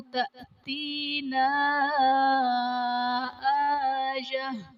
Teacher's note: تأتینا حمزہ ساکنہ ہے، جھٹکا دے کر پڑھیں گے اور الف سے پہلے نون پر زبر الف مدہ کا قاعدہ اور حرف مدہ کے بعد حمزہ دوسرے کلمہ میں آ رہا ہے تو یہاں پر مد منفصل کا قاعدہ ہوگا۔